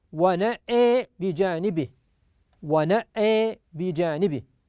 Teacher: فأمال الهمزة في كلمة ونأى، ويتنبه بارك الله فيكم إلى أنه أمال الهمزة وتبقى فتحة النون على ما هي عليه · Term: إمالة